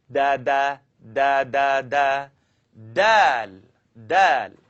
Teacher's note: I want you to tap your tongue behind the top teeth.